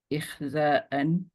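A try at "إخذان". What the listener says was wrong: Not ikhza'an. Hamza in front. Yes, the root letter is Hamza. Yes, iqadan, like imanan.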